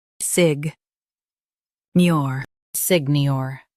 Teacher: Stress NIOR and keep SIG soft.